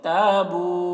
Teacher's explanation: الف مدہ ہے اور یہاں پر واو مدہ ہے، دونوں کو 1 الف کے برابر کھینچ کر پڑھیں گے